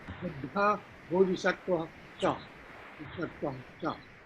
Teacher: When Cha is following, the Visarga turned into Sha. That is called Sandhi.